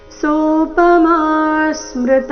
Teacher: ಸೋಪಮನಲ್ಲಿ ಮ ದೀರ್ಘ ಬಂದು ನಂತರ ಸೌಮ್ಯ ಆಘಾತ